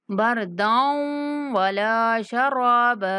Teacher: دال کو واو کے ساتھ ملاتے ہوئے غنہ کے ساتھ ادا کریں گے